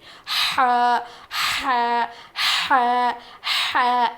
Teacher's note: ح ادا ہوتا ہے حلق کے بیچ والے حصے سے. حلق کے بیچ والے حصے سے. · جب ہم ح کہتے ہیں تو سانس ہماری باہر آتی ہے، جیسے کہ ایسی آواز آئے گی، سانس ہماری باہر نکلے گی.